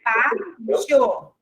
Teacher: esse som, iô, representa o i semivogal e o o vogal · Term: ditongo crescente